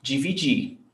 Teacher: in the infinitive verbs, I don't pronounce the R